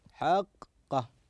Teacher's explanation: حرفين الاول ساكن والثاني متحرك وهنا جاء الالف فيكون يمد مدا لازما